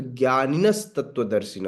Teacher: जो विसर्ग है विसर्ग हट जाता है और आधा स में रूपांतरित हो जाता है